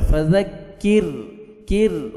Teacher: را کو باریک پڑھنا ہے پور نہیں کرنا